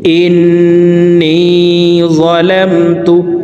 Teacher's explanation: ইন এখানে ওয়াজিব গুন্নাহ, হরকতের বামে নুনের উপরে তাসদীদ আছে, এই কারণে এই হরকতওয়ালা হামজাটি অর্থাৎ জেরওয়ালা হামজাটি তাসদীদওয়ালা নুনের সাথে 3 সেকেন্ড পরিমাণ গুন্নাহ করে ধরে রেখে পড়ব